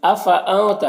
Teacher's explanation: نون میں اخفا ہوگا، نون کی آواز کو ناک میں چھپا کر پڑھیں گے